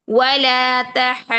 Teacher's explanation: 6 حرکات لمبا ہا کو کریں گے اور پھر ضاد کے اوپر تشدید کا وقت دے کر پھر اس کی ضمہ پڑھیں گے.